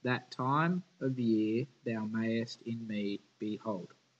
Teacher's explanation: me behold five feet grouped yeah one two three four five unstressed then stressed in each one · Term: iambic pentameter